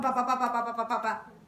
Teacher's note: el español a diferencia de otras lenguas tiene una duración casi idéntica o con muy poca diferencia entre cada sílaba